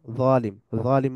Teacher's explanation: বা heaviness apply A ডিপার sound by raising the tongue slightly একটু deep আওয়াজ হবে জিহ্বাটাকে একটু কুচিয়ে ফেলার মাধ্যমে · তাফকিম হবে ওই যে হেভিনেস হবে মুখটা গোল হয়ে যাবে